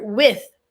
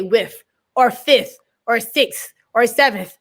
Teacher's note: the way that we pronounce words here with the th sound we often would turn it into an f sound